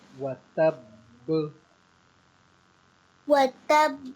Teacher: جو پہلی با ہے اس پہ تھوڑا سا روکیں گی، ہونٹ تھوڑی دیر بند کریں گی